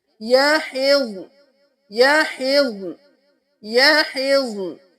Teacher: यहिज़, यहिज़ुन भी नहीं करना, यहिज़्न भी नहीं करना, कलकला नहीं करना, दोनों को साकिन रखें।